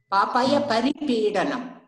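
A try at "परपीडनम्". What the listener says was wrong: Parapeedanam, not paripeedanam. It's parapeedanam.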